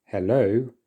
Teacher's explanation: in this word hello the stress is on the second syllable so we're emphasizing the second syllable instead and this is what